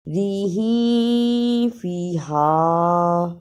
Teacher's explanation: تنوین کی آواز کو تھوڑی دیر ناک میں چھپا کر غنہ کرنا ہے